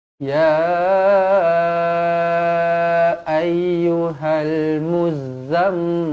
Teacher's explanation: Okey, jadi ini mim yang bertanda sabdu. Wajibul ghunnah, dibaca dengung dua harokat.